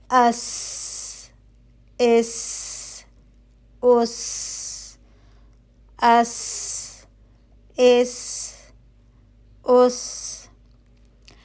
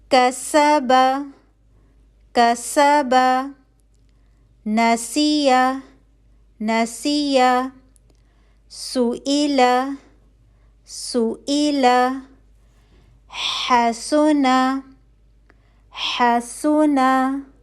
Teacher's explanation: सीन पतला हर्फ है आवाज पतली रहेगी इसलिए इसकी सीटी की आवाज भी पतली रहेगी और इसमें हमारी जुबान जो है वो बिल्कुल सीधी रहेगी ठीक